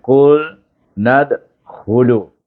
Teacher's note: Bila dia bersambung baru dimatikan huruf dal ini dengan huruf nun ini, bunyinya nad dengan qalqalah sughra.